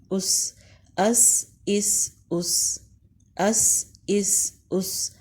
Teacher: سین حروف ہمس میں سے ہے اور جب مخرج پہ جائیں گے تو ہوا جاری رہے گی